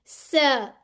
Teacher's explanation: अब सीन में सीटी की आवाज आनी चाहिए